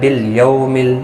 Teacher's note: یو واولین ہے، تھوڑا نرمی کے ساتھ کھینچ کر ادا